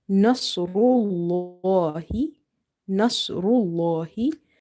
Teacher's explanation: So in the word Bismillah, this lam was light because of kasra before it. But here in the word Nasrullah, lam is heavy because of dama before it.